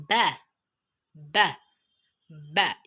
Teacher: So when you're pronouncing ba, both the upper and the lower lips would meet each other.